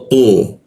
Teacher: Tu posisinya lidahnya dilengkungkan di belakang gigi ya. Bagian tengah dia tu.